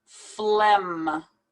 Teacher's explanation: It's as if we pronounce the PH like an F sound. And we don't pronounce the G at all.